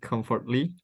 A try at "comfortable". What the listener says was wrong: No, it's comfortable. Oke, bukan comfortable, jadi for-nya itu nggak dibaca ya. Ininya dihapus ya. Comfortable. Okay, so it's not comfortable, it's comfortable.